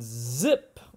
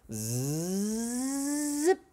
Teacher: Okay, this is an alveol. The tip of the tongue is high and behind the top teeth. It's a fricative, so we push air out slowly, and it's voiced. And this means that my throat vibrates. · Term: alveolar